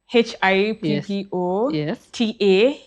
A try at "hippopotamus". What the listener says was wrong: So it's actually Hippopotamus. But you are close. You just missed that PO hapo katikati.